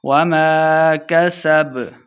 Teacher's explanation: سین پہ سیٹی کی آواز آئے گی